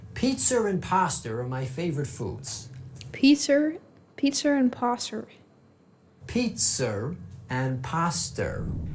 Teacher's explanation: If a word ends with a vowel and the following word begins with a vowel, we add an extra R sound in between those two.